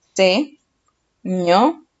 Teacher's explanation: ¿Cuál es la sílaba con mayor fuerza de voz? ño. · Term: acento prosódico